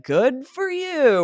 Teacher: It is quite pronounced to be like, "Good for you." We're drawing out the words when we're sarcastic